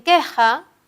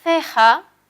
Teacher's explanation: una es oclusiva y la otra es fricativa, sino también de punto, porque la primera es velar y la segunda es interdental. Sin embargo, en común sí tienen el hecho de ser sordas, es decir, las cuerdas vocales en los dos casos se mantienen sin vibración.